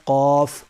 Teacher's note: اس کے بعد ہے قاف، بڑا قاف دو نقطوں والا، یہ پر ہے، یہ قاعدے میں آیا تھا قاف کا ثانی کاف یعنی چھوٹا کاف، تو یہ دونوں سیم لگتے ہیں بولنے میں اور بعض حضرات بول بھی دیتے ہیں، لیکن قاف یہ پر ہے، موٹا پڑھا جائے گا، حلق سے نکلے گا، اور کاف یہ سمپل باریک ہے۔